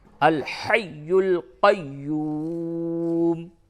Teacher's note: یا کے اوپر دونوں جگہ پہ تشدید ہے، سختی کے ساتھ ملاویں